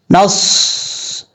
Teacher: صاد حروف صفیریہ میں سے ہے اور حروف صفیریہ سیٹی کے ساتھ پڑھے جاتے ہیں. صاد میں سیٹی تو آئے گی، لیکن آپ نے یہ بھی خیال رکھنا ہے اس کو پر بھی پڑھنا ہے. · صاد حروف مستعلیہ میں سے ہے، پر پڑھا جائے گا، اور جب تک پر نہیں پڑھیں گے اس کا مخرج صحیح طریقے سے ادا نہیں ہوگا، یہ یاد رکھیے گا.